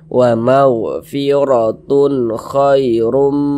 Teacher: maka tanwin bertemu dengan huruf k huruf k huruf izhar halqi maka hukumnya adalah izhar halqi maka dibaca jelas tak berdengung